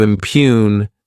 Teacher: this word has two syllables and the stress is on that second syllable.